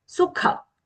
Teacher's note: sukha, the kha mahaprana